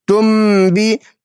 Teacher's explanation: نون کو میم سے بدل کر غنہ کر کے پڑھیں گے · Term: اقلاب